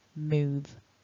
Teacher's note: to make that v that the top teeth and the bottom lip need to touch and it's a voiced consonant and we're not pronouncing that e at the end so i'm